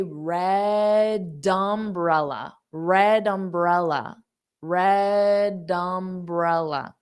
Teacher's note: So instead of saying red umbrella, because I have to pronounce red with that D, I can just say red umbrella, red umbrella, red umbrella. So I transfer the D onto the next sound so I can say those two like one word